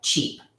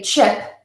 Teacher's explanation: instead of the long e sound I will hear my clients say the short I sound